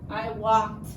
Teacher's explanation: for this word it sounds like a T sound at the end